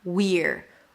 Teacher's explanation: So basically it's a high E of the we, and then you reduce it to an R.